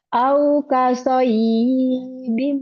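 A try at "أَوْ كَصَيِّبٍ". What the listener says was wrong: Alah. Gak ada matnya. Asoyibim. Alah. Gak ada matnya. Bukan soy. Tapi soyibin. Soyibim.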